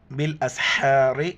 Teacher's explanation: ہا کو گلے سے کرنا ہے، وقفن یعنی یہاں پر ہمیں ٹھہرنا ہے.